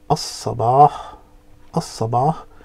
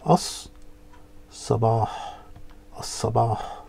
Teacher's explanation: the lam becomes silent, and the alif joins straight onto the sad